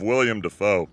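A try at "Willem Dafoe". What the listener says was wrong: It's not William, it's Willem.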